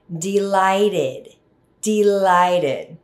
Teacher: Notice the ending ed is pronounced as id.